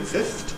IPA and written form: fɪfθt (fifthed)